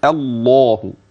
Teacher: الهمزة ترقق، اللام بعديها أي لام لفظ الجلالة تفخم